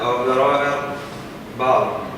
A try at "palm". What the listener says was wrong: Palm. The L is silent here. Palm.